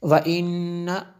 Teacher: نون مشدد ہے اس لیے غنہ ہوا